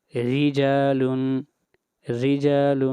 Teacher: را کے نیچے زیر ہے، اس لیے اس را کو باریک پڑھیں گے